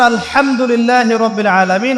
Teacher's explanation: হা এর মাখরাজ কোথায় বলেন একজন কণ্ঠনালীর মাঝখান থেকে